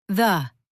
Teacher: Mouth, tongue out, air through. Voiced TH, the, your tongue vibrates.